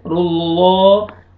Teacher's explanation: लाम जलाला को आपने मोटा पुर करके पढ़ना है